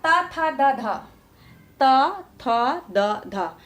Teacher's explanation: पूर्णतया हमारे जो जीभ का अग्रभाग है वो दांतों में जाकर सटता है, इसलिए इसका उच्चारण स्थान दंत मान लिया जाता है। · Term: त वर्ग